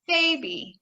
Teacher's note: so our stress is on the first syllable